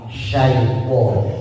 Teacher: Shin itu punya sifat namanya tafasi, yaitu suara seperti suara ombak. Jadi tebal suaranya.